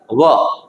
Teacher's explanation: વ ને તમે બોલો અને ઉચ્ચારોને વ તો એ પણ દાંત અને હોઠ દ્વારા જ ઉચ્ચારાતો